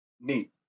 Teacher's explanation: to get the n as if you uh pronouncing meat but not as a heavy double e sound in the middle it's not a prolonged e